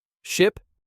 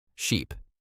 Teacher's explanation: The short sound is tighter. Shorter, your mouth is more closed. The long sound is more open. Longer, more stretched.